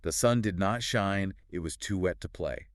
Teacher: Anopestic means two unstressed syllables followed by a stressed syllable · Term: anopestic tetrometer